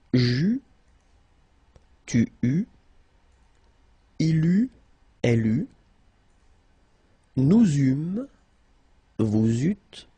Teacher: Okay, so as you can see, phonetically it's quite a challenge because you've got to keep in mind that for each forms you will pronounce this combination of vowels e, u. You don't pronounce it like normally we would pronounce it e, okay, but we will pronounce it u all the time.